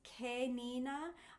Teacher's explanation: I'm really using kind of a wide mouth and a bright E.